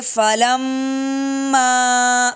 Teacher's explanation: میم پہ مد ہے، اس کو غنہ بھی کریں گے اور مد بھی کریں گے